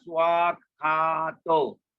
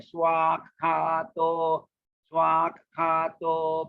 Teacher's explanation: Remember to drag your A there. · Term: Long A